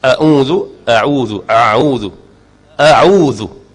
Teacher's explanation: Jaga hamzah dengan ain. Makhraj dia duduk dekat-dekat.